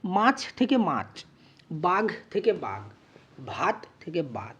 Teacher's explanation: এখানে দেখো ছটা চতে পরিণত হয়ে গেছে, অর্থাৎ মহাপ্রাণ ধ্বনিটা অল্প প্রাণ ধ্বনিতে পরিণত হয়েছে, ঘটা গতে পরিণত হয়ে গেছে, আর ভটা বতে পরিণত হয়ে গেছে, অর্থাৎ এখানে প্রত্যেকটার ক্ষেত্রে কিন্তু মহাপ্রাণ ব্যঞ্জন ধ্বনি অল্পপ্রাণ ব্যঞ্জন ধ্বনিতে পরিণত হয়েছে, তাই একে অল্প প্রাণী ভবন বলা হচ্ছে।